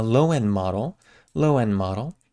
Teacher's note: we take out that D in end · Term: reduced d